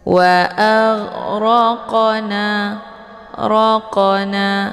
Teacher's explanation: di tengah kalimat ini dinamakan dengan qalqal Sugra jadi cara bacanya qafnya dipantulkan dengan pantulan yang ringan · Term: qalqalah sughra